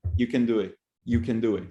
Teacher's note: But when we put that in the sentence, it comes out that we are going to stress the main verb, which is do. So what happens to the modal verb is that it is underpronounced. In that case, what happens is it becomes can.